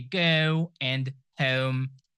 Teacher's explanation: British people say go and home, a little bit round.